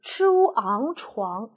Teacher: 这是一个翘舌音▁，chu▁ang▁床，翘舌音加后鼻音啊